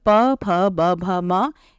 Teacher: इन वर्णों का उच्चारण ओष स्थान से होता है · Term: ओष्ठ स्थान